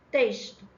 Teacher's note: em texto o X tem som de S